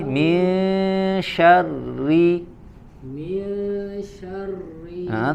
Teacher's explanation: Huruf ro kasroh ya ditipiskan suaranya